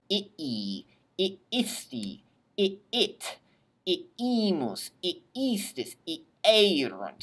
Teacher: you really want to separate the two syllables, the two double I's